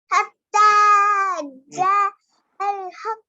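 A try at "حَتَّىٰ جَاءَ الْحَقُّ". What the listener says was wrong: मत को कौन खींचेगा और खींचिए दो अलिफ के बराबर जाअल हक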